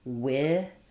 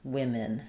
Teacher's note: It doesn't have any sort of O vowel there. It's actually women. So we have the I sound in both.